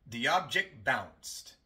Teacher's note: la T entre dos consonantes. Y por eso se omite.